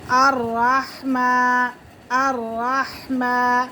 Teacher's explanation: میم کو ایک الف کے برابر کھینچ کے پڑھیں گے